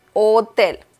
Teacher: Remember that the letter H in Spanish is mute, so you don't have to pronounce it.